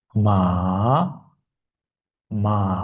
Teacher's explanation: Ikkinchi shkaladan boshlanadi, birinchi shkalaga tushadi va yana tepaga to'rtinchiga chiqadi. Ma, ma va oxirgisi to'rtinchi ton. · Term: Uchinchi